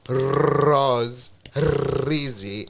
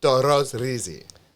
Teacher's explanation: It's one flick of the tongue. It's not like the rose rizi.